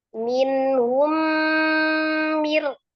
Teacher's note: diidgamkan ke huruf mim yang kedua dilebur ya dicara disertai dengan gunah yang paling sempurna akmal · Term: idgham mimi